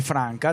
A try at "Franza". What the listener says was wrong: Franza. Brasiliano. Pronuncia. No, è brasiliano.